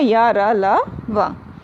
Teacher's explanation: जीभ, तालु, दांत और होठ के परस्पर सटाने से होता है, किंतु कहीं भी पूर्ण स्पर्श नहीं होता, तो इसीलिए इनको कहते हैं अंतस्थ। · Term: अंतस्थ व्यंजन